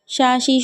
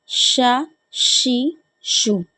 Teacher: تفشی ہمیں واضح کرنی ہے اس میں